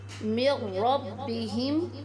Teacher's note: جب حرف را آ جائے تو اس میں ہم بغیر غنہ کے ادغام کریں گے۔ من ربہم، میم کے اوپر چھوٹا سا قوف لکھا ہوا ہے، اس کا مطلب ہے کہ یہاں ٹھہرنا نہیں چاہیے، یعنی جہاں پر قوف لکھا ہوا آئے گا تو اس کا مطلب ہے کہ ہمیں یہاں نہیں ٹھہرنا۔